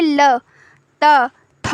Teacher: आपकी जिह्वा दंत को स्पर्श करेगी। आप बिना दंत में स्पर्श कराए इन शब्दों का उच्चारण नहीं, इन वर्णों का उच्चारण नहीं कर सकते हैं।